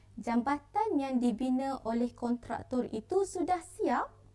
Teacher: Intonasi atau nada di hujung ayat itu ditinggikan sedikit.